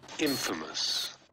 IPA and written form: ˈinfəməs (INFAMOUS)